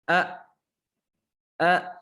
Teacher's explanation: pita suaranya menutup ketika membaca huruf hamzah tentunya ini ketika sukunnya ketika sukun Huruf Hamzah kita suaranya tertutup